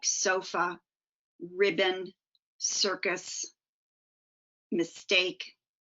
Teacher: Schwa itself has allophones, sometimes sounding like a short U, sometimes sounding like a short I.